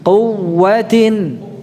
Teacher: Ingat jangan dipanjangkan kunya ya, tapi ditekan wawunya.